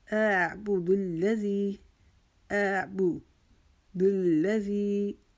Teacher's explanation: زی کو ہم ایک الف کے جتنا کھینچیں گے